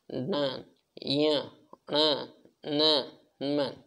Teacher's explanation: जिनके उच्चारण में हवा का प्रमुख अंश नाक से निकलता है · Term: नासिक्य